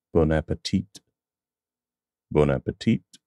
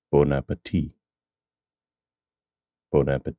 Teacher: in French they would drop the final consonant